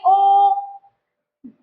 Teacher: कंठ और ओष्ठ दोनों में चेंजेस आ रहे हैं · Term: कंठोष्